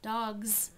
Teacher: Dogs, it becomes voiced because of the voiced G.